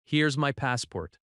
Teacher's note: Notice how here is becomes here's. That reduction is very common.